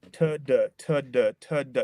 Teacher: so T's and D's are more or less the same sound the difference between these two sounds is whether your voice box your larynx is vibrating or not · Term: voicing